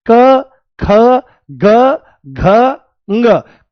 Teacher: इसका कोई भी व्यंजन क ख ग घ ng कंठ से, यानी कि इसका उच्चारण करते समय वायु कंठ को स्पर्श करती है। तो ध्यान रखना है कि जो ये क वर्ग है ये कहां से बोला जाता है, ये कंठ से बोला जाता है।